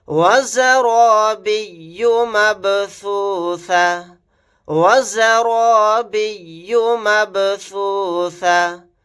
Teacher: را کو موٹا یعنی پر پڑھیں گے. با ساکن ہے, یہاں پر قلقلہ کر کے پڑھیں گے